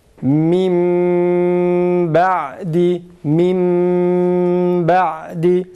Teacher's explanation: Sanki iki tane mim varmış gibi okuyoruz. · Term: halis mime